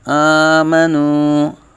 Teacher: حمزہ کھڑا زبر کا مکمل الف مدہ ایک الف تک کھینچ کے پڑھیں گے